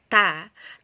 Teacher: Di satu sisi kita tertahan, sifatnya tertahan, ta, tapi di sisi lain udaranya sudah mengalir.